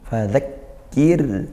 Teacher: bertemu sukun yang sebelumnya kasrah, maka dia dibaca tarqiq tipis ra-nya dan tetap ngalir karena ra sukun sifatnya tawassut, aliran suaranya sedang seperti itu, tidak dihentak, tidak juga tidak ditekan, tidak sampai lepas banget seperti dengung.